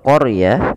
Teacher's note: Kemudian pelafal qaryah, di situ huruf ro-nya ditebalkan. Karena huruf ro yang didahului dengan huruf fathah, maka dia kita namakan dengan ro tafkhim, harus tebal